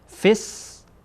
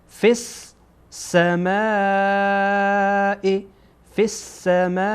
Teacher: اینجا فا با سین وصل میشه. فس گویایی که دو تا سینه.